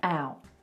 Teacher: A really wide vowel there, out. That's really Californian.